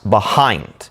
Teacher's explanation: If you say it out loud, the second half is said with more emphasis, behind. We don't say behind, we say behind.